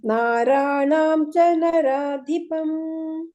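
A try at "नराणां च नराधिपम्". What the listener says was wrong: ಇಲ್ಲಿ ನ ಇದೆ ಮತಾಜಿ ಫಸ್ಟ್ ನ ಇದೆ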